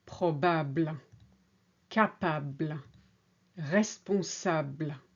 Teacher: The LE on the end is an afterthought in French, and it's quite soft, able. So you hear ab a lot more than the LE on the end. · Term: able endings